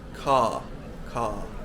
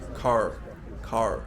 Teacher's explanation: when R is at the end of a word, like in the word car, British people don't pronounce it properly. We just make it a long vowel